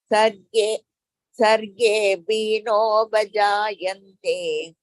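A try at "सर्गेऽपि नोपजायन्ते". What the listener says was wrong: Don't stress here. Sarge pinopajayante. No.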